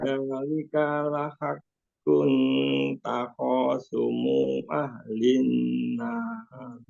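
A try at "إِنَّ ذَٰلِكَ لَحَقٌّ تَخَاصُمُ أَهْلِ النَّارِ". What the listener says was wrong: Bapak sumu, jadi kepanjangan tuh Pak. Lambat nyambung.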